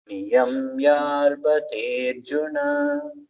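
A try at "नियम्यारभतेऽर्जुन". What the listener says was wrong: Niyamyara. Ra is full there. Niyamyarabhaterjuna.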